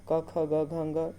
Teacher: क ख ग घ ङ इन सब का उच्चारण स्थान कंठ होता है